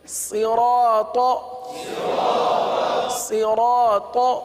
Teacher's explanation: अब यहाँ पर भी देखिए कि सौत حروف صاد کو ہم نے ہمیشہ پر پڑھا ہے، چونکہ حروف مستعلیہ میں سے اس کو ہمیشہ ہم نے پر پڑھا ہے، تو یہاں پر بھی پر پڑھیں گے۔